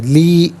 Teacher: لی کو ذرا ایک الف کی مقدار کھینچ کر پڑھیں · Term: مدہ